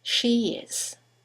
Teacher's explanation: there's a semivowel y that links the vowel at the end of she to the vowel at the beginning of is